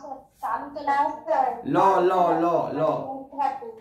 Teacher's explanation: ল তো মাড়িতে লাগছে, মাড়ি মূর্ধাতে লাগছে, লটা দেখ মূর্ধাতে লাগছে, ল ল ল ল, হ্যাঁ মূর্ধাতে লাগছে না, মাড়িতেই লাগছে, মূর্ধাতে লাগছে।